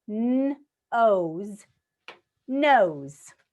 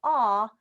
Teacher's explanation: It no longer says the short vowel of aw. It moves into the long vowel